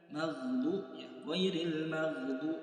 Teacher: Du-nya panjangnya 2 harokat, jangan sampai lebih.